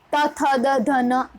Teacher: ત થ દ ધ ન તો એ દંત્ય વર્ણો છે.